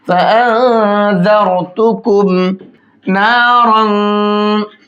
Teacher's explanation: اس طرح سے زارو، اس را کو موٹا کر کے پڑھیں گے، کیونکہ را کے اوپر جزم ہے، را ساکن ہوا اور اس سے پہلے زبر ہے۔ را ساکن سے پہلے زبر ہوتا ہے تو را کو موٹا کر کے پڑھتے ہیں۔